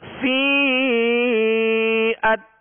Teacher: مد متصل، اس لیے کہ یا مدہ کے بعد حمزہ اسی کلمہ میں ہے، لہذا یہ مد متصل ہوگی